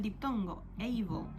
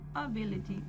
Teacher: Able suena el diptongo, able, mientras que en ability suena schwa.